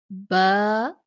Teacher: با دونوں ہونٹوں کے تری والے حصے سے ادا ہوتا ہے